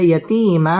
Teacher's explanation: ইয়াতিম মধ্যে তাবাঈ একা লিফ টেনে পড়তে হবে